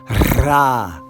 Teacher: you have the Spanish R with an ah vowel underneath it. If you can roll your tongue, that's great.